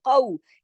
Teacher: कौलहुम, कौ, अब ये देखिए वावेलीन आ गया, इसको वावेलीन की तरह पढ़ेंगे, इसकी आवाज में नरमी के साथ मोड़ पैदा करते हुए। कौ, एक तो काफ मोटा हर्फ है, कौ, और फिर वावेलीन भी है साथ में।